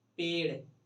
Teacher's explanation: तो जो जीभ है हम लोग का वो मुड़ के एकदम तालू को झटके से टच करता है और छोड़ता है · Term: उच्छित व्यंजन